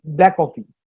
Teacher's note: So when two same consonants are there in two words, black coffee, K and C, both are K. So we'll remove the first consonant. It will become black coffee.